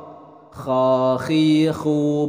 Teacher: dalam pelafalan huruf kha ini adalah harus jelas seperti ada seraknya